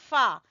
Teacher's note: जब सामने वाले सामने वाले दो दांत ऊपर वाले उनके सिरे नीचे वाले होंठ की गीली जगह से लगेंगे तो वहां से अदा होगा फा